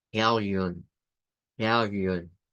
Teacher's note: es una I redonda, por eso es que se hace en forma de U · la U que se hace como U, como una mezcla entre la I y la U